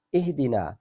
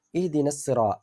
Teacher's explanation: اگر ہم اکیلا اہدنا پڑھیں تو الف مدہ ہے، اگر ملا کر پڑھیں تو پھر الف مدہ نہیں پڑھا جائے گا، ڈائریکٹ یہ حرکت جو ہے وہ آگے صاد کے اوپر اثر کرے گی۔